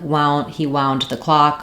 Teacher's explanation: And then when we go to wound, like wound, he wound the clock, or he was very wound up, we have the ow diphthong for letters OU